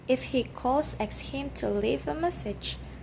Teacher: And then we have conditional sentences. The tone rises in the first clause and falls gradually in the second clause.